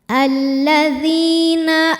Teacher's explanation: maka huruf Dal kita panjangkan dua harakat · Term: Mad Thobi'i